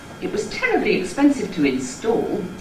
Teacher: Each successive accent jumps up a little bit in pitch and reestablishes the point from which the Fall starts. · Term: Sliding Head